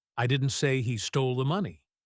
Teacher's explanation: The spotlight is on stole.